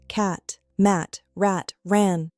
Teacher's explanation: It makes the ah sound, just like when you open your mouth wide. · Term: short A